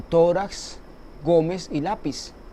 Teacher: tiene el acento en la penúltima sílaba